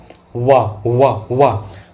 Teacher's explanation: तो आपके ओंठ और दांत, ओंठ जो हैं दंत से टकरा रहे हैं, वाह वाह बोल के देखिए ना, वाह वाह वाह। तो जब ओंठ आपके दांत से टकरा रहे हैं तो इसलिए इसको कहते हैं दंतोष्ठ व्यंजन